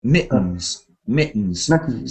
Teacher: You don't need a D or T sound. You can say a kind of glottal stop.